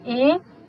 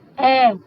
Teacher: Observe como a língua fica alta e depois fica baixa